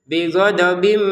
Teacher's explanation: Dimasukkannya tanwin ke mim disertai dengungan bighodob menjadi bighodobim min seperti itu.